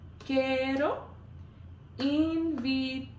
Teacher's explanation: There's a little bit of a roll on the R there in invitarte. You can roll your R's by putting the tip of your tongue on the roof of your mouth and your tongue kind of goes like that.